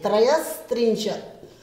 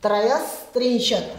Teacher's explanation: अब ध्यान से देखना है, त्रय और जो विसर्ग थी उसको हम स बनाएंगे, त्रयस त्रिंशत, त्रिंशत में जो त है उसको देखते हुए विसर्ग को स बना है, दंत्य स